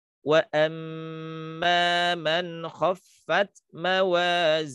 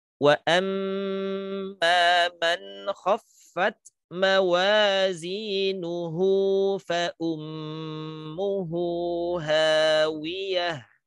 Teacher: Ketika berhenti maka haknya menjadi sukun. Maka di situ tidak dibaca panjang.